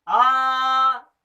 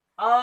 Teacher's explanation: दूसरा है दीर्घ। दीर्घ अर्थात ह्रस्व से डबल समय, दुगना समय लेना दीर्घ कहलाता है।